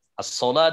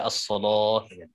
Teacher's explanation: As-sholah dibaca as-sholoh. Itu lam taglid, lam yang dibaca tebal.